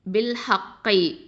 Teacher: இந்த ஹ சொல்லும் போது இது வந்து நல்லா வந்து வசத்துல் ஹல்குலேருந்து வரக்கூடிய எழுத்து, நல்லா காற்று வெளியில் வரணும்.